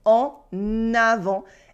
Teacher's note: And first of all, you can hear la liaison. We can now hear the N in the middle of en avant. It's not en avant, it is en avant, because the next word, avant, starts with a vowel.